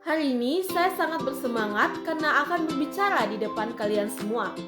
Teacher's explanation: Contoh variasi intonasi yang kedua yaitu nada turun di akhir kalimat, yang dimana menunjukkan kepastian dan juga ketegasan.